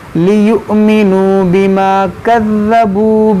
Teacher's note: حمزہ ساکنہ ہے, جھٹکا دے کر پڑھیں گے